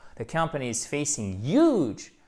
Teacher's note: J'accentue sur le huge.